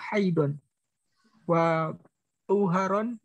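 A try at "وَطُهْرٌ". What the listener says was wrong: wa tuhron bukan tuharon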